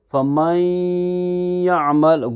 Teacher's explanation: نون کی آواز یا میں بھی داخل ہو رہی ہے اور گنہ بھی ہو رہا ہے، ناک میں بھی جا رہی ہے